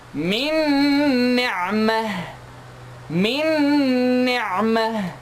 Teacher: So I merge the first noon to be completely skipped. I'm gonna jump from noon second for the letter before noon second to the letter after, which is noon here. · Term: idgham